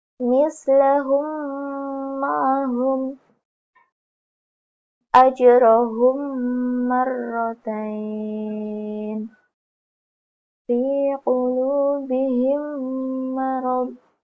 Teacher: Cara membaca idgham mislain ini adalah menyuarakan suara mim rangkap atau ditasydidkan dengan samar-samar dengan panjang dua harakat, yaitu ditasydidkan dengan panjang dua harakat dan dengan samar-samar.